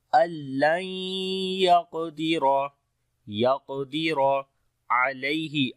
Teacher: आइन को गले के दरमियान वाले हिस्से से पढ़ेंगे, या हरफे लीन है यहाँ पर नर्म पढ़ेंगे, और दाल के ऊपर जब रुकेंगे तो कलकला करेंगे, दो पेश ख़त्म हो जाएंगी।